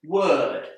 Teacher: the O together with the r is pronounced uh